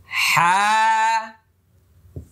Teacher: দুই নম্বর মাখরাজ মানে কন্ঠনালী হলফ গলার মাঝখানে